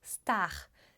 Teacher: Em vez de dizer star, como em inglês, se diz star, com R francês